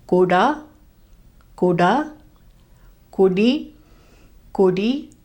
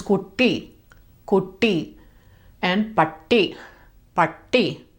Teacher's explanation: As a reminder, the ta sound is made in the back of the mouth. In the middle of a word, it reduces to a D sound instead of a T sound. And when it's double, it holds on to that T sound.